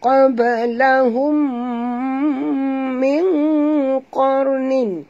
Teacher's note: mim mati bertemu dengan mim yang berbaris. Idgham mislain wajib dengung.